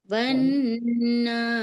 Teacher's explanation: अब वाव के ऊपर जबर है और नून पे तशदीद है, तो नून पे तशदीद होती है तो नून मुशद्दद होता है, और जब नून मुशद्दद होता है तो नून को नाक में नून की आवाज को हम रोक कर पढ़ते हैं, क्योंकि गुन्ना हो रहा है ना।